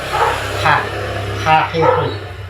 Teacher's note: Terus ha ada di tenggorokan, tenggorokan bagian tengah. Nafasnya mau keluar.